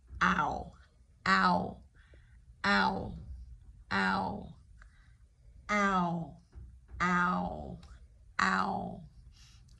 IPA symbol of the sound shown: æʊ